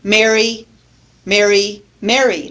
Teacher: I pronounce all three of those words the same I don't make a difference